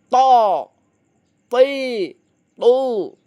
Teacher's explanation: Ujung lidah menempel gusi atas bagian dalam lur. Yuk, tempelkan ujung lidah kita dengan gusi atas bagian dalam. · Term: huruf to